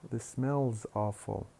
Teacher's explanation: We pronounce the auxiliary as a sound attached to the previous syllable.